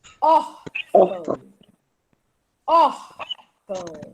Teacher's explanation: A tônica, a sílaba tônica mais forte é a penúltima. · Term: Paroxítona